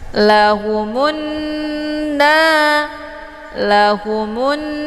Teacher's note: Jadi mimnya ditekan kemudian ditahan lebih kurang 2 harokat. Untuk alif lamnya tidak lagi dibaca, ya. · Cara bacanya mimnya ditekan kemudian langsung masuk ke huruf nun. dengan cara ditahan, karena di sini huruf syamsinya adalah nun yang bertasydid. · dengan cara ditahan, karena di sini huruf syamsinya adalah nun yang bertasydid. Jadi nun ini dinamakan dengan ghunnah musyaddadah. Cara bacanya didengungkan.